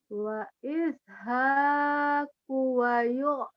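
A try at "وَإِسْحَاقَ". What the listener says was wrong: wa ishaqo, wa ishaqu. A-nya jadi U, U-nya jadi A.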